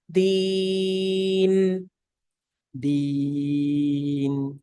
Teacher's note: So make sure you're saying deen as compared to deen. Like don't let any air come from the nose when you're making the e sound after the dal kasraya.